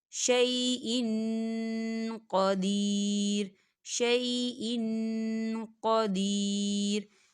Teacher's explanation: یہاں دیکھیں حمزہ کے نیچے تنوین ہے اور تنوین کے بعد قوف آ رہا ہے، اور قوف جو ہے اخفا کا ورڈ ہے تو یہاں پر اخفا ہوگا، یعنی تنوین کی آواز کو ہم ناک میں چھپائیں گے۔